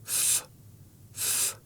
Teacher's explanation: C'est un son soufflé. Pour le faire, place ta lèvre inférieure contre les dents supérieures et souffle. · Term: Le son F